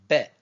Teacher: se prononce au niveau de l'avant de la bouche au niveau des lèvres exactement